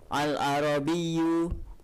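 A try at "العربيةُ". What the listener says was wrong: Ya, bukan al-arabi tapi al-arabiyatu.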